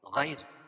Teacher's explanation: یا ساکن سے پہلے زبر ہو تو یا لین، اس کو نرم آواز کے ساتھ جلدی ادا کریں گے اور را کو پر پڑھیں گے کیونکہ را کے اوپر پیش ہے.